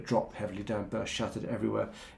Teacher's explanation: down but shattered everywhere it's quite muscular it uses repeated um what are called plosive consonants the B and D sounds in drop heavily down and burst